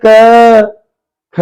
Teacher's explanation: आवाज गले से आ रही है, कंठव्य है हमारा, कंठ पे लगाएंगे टिक।